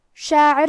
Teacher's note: حرف العین کی ادائیگی حلق کے درمیان والی حصے سے ہے